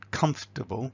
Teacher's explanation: So for example on comfortable that is, that initial syllable, is longer and slightly louder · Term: stress